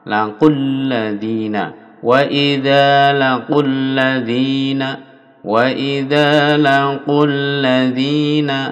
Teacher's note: Wa idza laqul kunya pendek langsung dimasukkan ke lam ya.